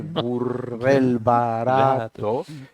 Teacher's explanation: Hay la vibrante R, burdel barato, y las vocales más abiertas, la O y la A, son las que más se repite, que son las que dan más resonancia